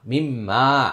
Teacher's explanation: মিম মিম জের মিম, মিম আলিফ জবর মা, মিম মা, এক আলিফ টান, এটা ওয়াজিব গুন্না এবং এক আলিফ টান